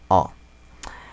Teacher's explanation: Simplemente es una A en la que la lengua va hacia atrás. A, O. La lengua va hacia atrás.